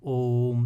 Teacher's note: इनमें ह्रस्व स्वर की अपेक्षा 3 गुना समय लगता है। ओम जैसे आप उच्चारण करते हैं, है ना, ओम, तो ओ जो ये बीच वाला उच्चारण हो रहा है इसमें आपको लंबे समय तक ठहराव करना पड़ता है, तो इनको हम प्लुत स्वर बोलते हैं।